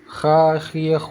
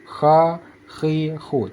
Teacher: Bukan di hidung, tetapi di tengah kerongkongan. Kalau huruf kha di ujung kerongkongan, kha, khi, khu, semacam ada seperti kerokan, kha, khi, khu.